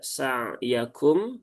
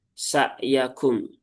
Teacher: Ain sukun ini jangan sampai tertukar dengan hamzah